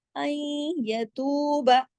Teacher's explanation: با کو زیادہ نہیں کھینچنا, ایک حرکت پڑھا جائے گا